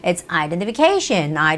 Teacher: The stress goes on the syllable CA. A is the vowel that has the stress, so it has to be identification.